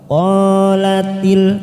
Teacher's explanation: qo fathah diikuti Alif dua harakat